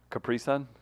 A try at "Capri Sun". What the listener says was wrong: Capri Sun. Yeah, it's not, you make it sound like one.